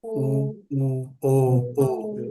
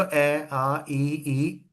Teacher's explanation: वृत्ताकार जिसमें होठ आपके क्या होंगे लिप्स? वृत्त की फॉर्म में गोल